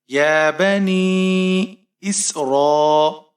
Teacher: نون کے نیچے زیر ہے، یا ساکن ہے، یہاں پر یا مدہ ہے اور مد منفصل ہے، اسے ہم 3 سے 4 الف تک کھینچ کر پڑھیں گے۔ یا بنی اسرا، حمزہ کے نیچے زیر ہے، سین ساکن ہے، حمزہ کو سین کے ساتھ ملائیں گے۔